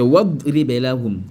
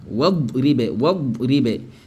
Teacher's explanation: Le hamzatul wasl n'est pas prononcé.